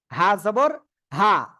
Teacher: এই যে গলাটা চিকুন করে উচ্চারণ করতে হবে, গলাটা কি চেপে ধরে হালকা উচ্চারণ করতে হবে, হালকা বাতাস বের হবে।